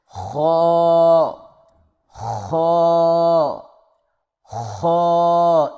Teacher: زبان کی جڑ کو تالو کی طرف بلند کرتے ہوئے موٹی آواز میں پڑھے، اور اس کو خوب موٹا کر کے آپ نے پڑھنا ہے، یعنی خو خو خو.